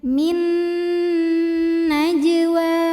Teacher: Maka cara bacanya nun pertama masuk ke nun kedua disertai bunyi dengung. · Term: idgham bhunah, idgham bi gunnah